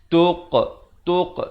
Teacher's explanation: qalqalah sughra diberikan pantulan dengan dibulatkan mulut sekejap menghasilkan bunyi qa itu